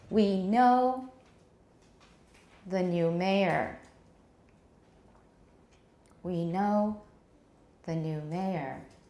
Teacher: the new is not really stressed mayor gets the tonic stress of the whole sentence